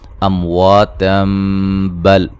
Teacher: یہاں نون تنوین کا اقلاب ہوگا